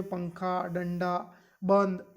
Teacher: इसे अनुस्वार कहते हैं। इसे नाक की सहायता से आपका उच्चारित किया जाता है या बोला जाता है।